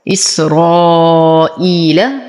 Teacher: إسرائيل حرف مد وبعده همز في كلمة واحدة، فالمد واجب متصل يمد بالإشباع